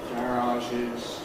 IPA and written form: ˈgærɑːʒɪz (garages)